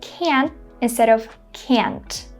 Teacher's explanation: they make sure to say can instead of can't, right? They try not to release this T sound. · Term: silent T